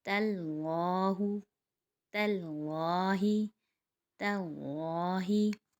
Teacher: تا باریک ہے اور لام موٹا، تو تا کو ہم باریک اٹھائیں گے اور پھر ہم لام کو موٹا اٹھائیں گے۔